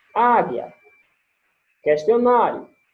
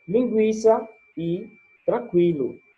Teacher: A palavra águia, ela tem o U, mas eu não pronuncio o U. Já na palavra linguiça, ela tem o U e eu pronuncio o U, certo?